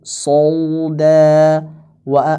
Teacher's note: alif yang mufakhamah itu jangan terlalu berlebihan, hatta taqruba minal wawi, sehingga condong lebih dekat ke malah ke wawu. Ya, kata beliau condong ke wawu. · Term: tafkhimil alifi